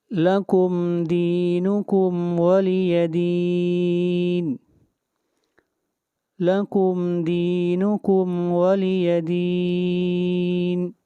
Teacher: دین کے اوپر مد عارض، اس کو 3 الف کے برابر کھینچ کر پڑھیں گے